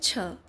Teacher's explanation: उच्चारण स्थान के आधार पर छ ध्वनि है तालव्य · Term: स्पर्श संघर्षी महाप्राण व्यंजन